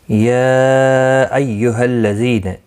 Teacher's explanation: یا مد منفصل ہے، 3 الف کی مقدار کے برابر کھینچ کر پڑھیں گے. ایہا، کسی بھی حرکت والے حرف کو کھینچنا نہیں، تشدید والے حرف کو تھوڑا سختی کے ساتھ پڑھیں تاکہ تشدید ظاہر ہو.